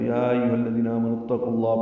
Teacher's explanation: اور یہ پورے قرآن کریم میں 7 مرتبہ ہیں، یعنی یا ایھا الذین آمنوا کے ساتھ اتقوا اللہ ملا ہوا 7 مرتبہ ہے، تو یا ایھا الذین آمنوا اتقوا اللہ پڑھیں گے، قاف کو پر پڑھیں گے، لام اس میں جلالہ سے ملائیں گے، یہ بھی پر پڑھیں گے، ہاں پر زبر ہے۔